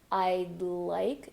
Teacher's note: notice how I'm not saying IG, but I then connect straight to the L.